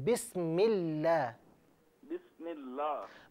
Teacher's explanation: बिस्मिल्लाह में जो लफ्ज़ अल्लाह की लाम है इसे बारीक पढ़िए